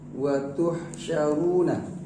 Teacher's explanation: ha dia makhrajnya itu di wasatul halqi, di pertengahan tenggorokan. Ha sama dengan ain ya, satu makhraj itu.